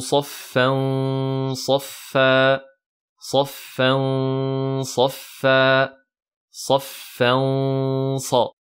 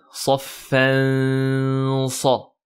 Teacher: Donc on met bien les deux temps avec la runna emphatique puisque c'est suivi de la lettre sad qui est emphatique. Et attention à ne pas dire saffan sa.